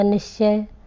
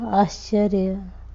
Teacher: जैसे ये देखें, निह प्लस चय, विसर्ग बदल गया श में, आधा श में, और शब्द बन गया निश्चय